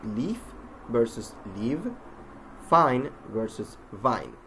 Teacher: F and V, labiodental fricative sounds, are produced with the upper teeth sort of biting down on the lower lip while allowing the air to pass through, producing the sound with audible friction. F is voiceless while V isn't, so they are produced, as we say, touching the lower lip and the upper teeth.